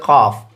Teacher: ज़बान की जड़ जब कौवे के करीब से नरम तालू से लगे तो इससे क़ाफ़ अदा होता है।